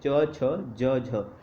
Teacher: च वर्ग जितना भी है जो स्पर्श संघर्षी माना जाता है